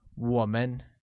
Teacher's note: pronounced with a falling rising tone on oh